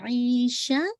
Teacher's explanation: شین پہ آپ کی زبان پھیلے گی